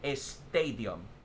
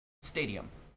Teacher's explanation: So when you have Spanish speakers that move into English, they would say estadium instead of stadium · the speaker will add an e before it